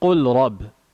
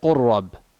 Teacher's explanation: We merge the lam and the ra. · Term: idgham